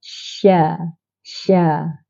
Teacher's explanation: sifat huruf tunggal bagi Sya ialah tafasi iaitu hemburan yang kuat